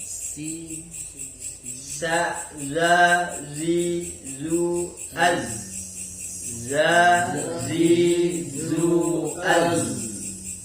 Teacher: Kemudian yang nomor 9 yang menggunakan ujung lidah, yaitu ujung lidah dengan permukaan dalam gigi seri atas, yaitu sin, shad, dan zi. Jadi ini melurusi, bukan menempel, hanya melurusi. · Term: suara sofil